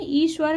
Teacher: ईश्वर का सही उच्चारण स्थान तालु से होता है